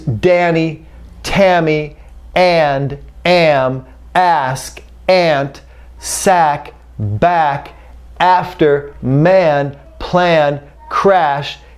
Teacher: The back of the tongue comes up. So to create ah, you need your mouth open, but your tongue up in the back.